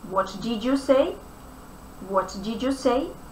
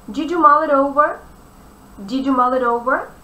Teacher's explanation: In the phrase what did you say, the word did ends with d sound. You starts with y sound. Together these two sounds combine and they produce the sound j, j. What did you say?